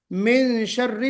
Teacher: मिन शर्री में मिन गुन्ना करना है, इख्फा वाला जो गुन्ना होता है ना वो करना है